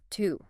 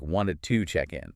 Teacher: in fast natural speech, to is very often not pronounced with that full, long ooh vowel sound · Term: schwa